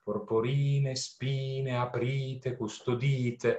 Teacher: non solo la rima baciata, porporine, spine, ma poi la assonanza con i suoni IE, i suoni vocalici IE, che trovate immediatamente dopo, quasi a costituire un eco, no?